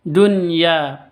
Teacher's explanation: Tidak boleh didengungkan, jelas, terang karena izhar. Hayatud dunya ya panjang 2 ketuk, mad iwad, okay, karena mad asli berada di waqaf jadi mad iwad. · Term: izhar fi kalimatin wahidah